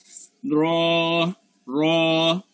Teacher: র আমরা বলছিলাম যে জিহ্বার আগা উল্টাইয়া উল্টা পিঠটা নিয়ে উপরে তালুতে লাগাতে হবে, জিহ্বার আগার উল্টা পিঠ উপরে দাঁতের গোড়ার সঙ্গে লাগা, র র। · তারপর র, র আমরা বলছিলাম যে জিহ্বার আগা উল্টাইয়া উল্টা পিঠটা নিয়ে উপরে তালুতে লাগাতে হবে, জিহ্বার আগার উল্টা পিঠ উপরে দাঁতের গোড়ার সঙ্গে লাগা